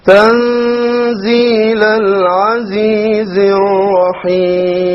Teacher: The ra here once again will be heavy. And then the lam over here will be solar, so it will be dropped